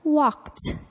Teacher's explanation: the ed verb ending sounds like a t walked even though it ends in the letter d